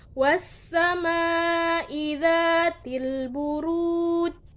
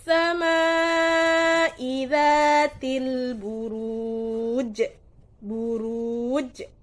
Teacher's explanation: karena dia sukun maka harus dibaca pantul karena dia termasuk qolqolah kubro